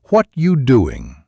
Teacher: You don't hear the word are